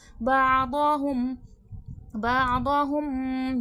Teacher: میم ساکن کے بعد با ہے، اخفاء شفوی ہوگا